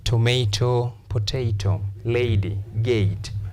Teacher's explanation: the diphthong A, combination of A and E